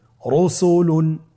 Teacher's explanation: র উপরে পেশে শেষে তাহলে র হরফটিকে মোটা করে পড়তে হবে